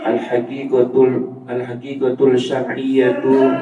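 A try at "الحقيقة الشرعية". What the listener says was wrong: Itu kan ada tasdidnya. Jadi kalau dia dibaca langsung al-haqiqatus syar'iyyatu.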